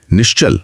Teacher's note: अगर विसर्ग के बाद च जैसा तालव्य वर्ण हो तो विसर्ग भी तालव्य श बन जाता है। जैसे नेह प्लस चल से निश्चल।